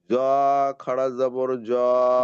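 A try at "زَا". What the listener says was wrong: জ নয়, রয়ের পরে যা।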